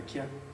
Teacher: Il n'y a aucune palatalisation